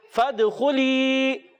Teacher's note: दाल में कलकला अदा करेंगे, आवाज लौट कर आनी चाहिए। खा को पुर अदा करेंगे और या मद्दा को एक अलिफ खींच कर अदा करेंगे।